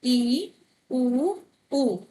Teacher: समृद्ध में मुंह कम खुलता है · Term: समृद्ध स्वर